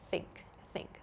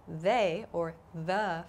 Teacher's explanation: we have an unvoiced th sound like in think think so in the word think i'm not using my vocal chords in the word they or the for example i am so th has a voiced and an unvoiced pronunciation so this